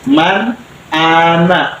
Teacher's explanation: tidak boleh mang, tidak boleh meng, nggak boleh dengung, nggak boleh sama-sama, harus jelas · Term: izhar